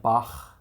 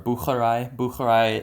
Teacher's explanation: the one you make in the back of your throat and then you have the velar fricative i don't know if you're familiar with this but this is in german